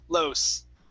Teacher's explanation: in english our s our tongue moves down lows that's why when you hear someone from the united states trying to speak spanish they say los okay and it sounds funny because their tongue is pointed down